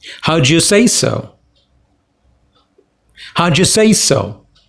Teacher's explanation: look at the way I've pronounced it how did you say so do you becomes Joe